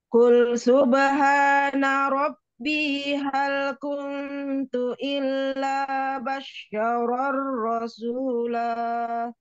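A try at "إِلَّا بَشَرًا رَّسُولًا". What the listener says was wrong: Enggak bash tapi basya. Yang ada tasdid sayang dari illa saja.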